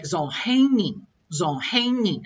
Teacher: I would come down real quick on that last character.